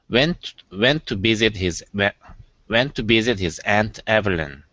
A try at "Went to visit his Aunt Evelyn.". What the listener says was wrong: Okay, the V in Evelyn is good. Here you're saying went to visit with a B. It's visit. Went to visit his Aunt Evelyn.